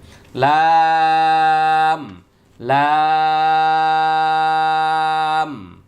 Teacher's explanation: জিহ্বার আগার কিনারা তার বরাবর উপরের দাঁতের মাড়ির সঙ্গে লাগিয়ে একটি হরফ উচ্চারিত হবে